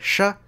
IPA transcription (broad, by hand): ʂ